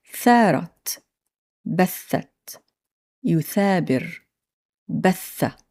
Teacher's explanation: place the tip of your tongue on the edge of your upper teeth and blow air through your mouth without vibrating your vocal cords